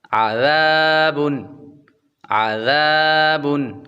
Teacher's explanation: عین کی آواز نکالیں گے اور بعد میں ذال نرمی کے ساتھ پڑھیں گے، ذال کے اندر سیٹ کی آواز بالکل نہیں آنی چاہیے